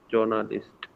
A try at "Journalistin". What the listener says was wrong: जो J है उसको या पढ़ना है. या.